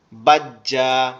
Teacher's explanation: এখানে কিন্তু উচ্চারণ হয় কি বাজ, এখানে কিন্তু বাজ উচ্চারণ হয়, কিন্তু আরেকটা ডাবল উচ্চারণ হবে, একটা জিম এক্সট্রা হবে।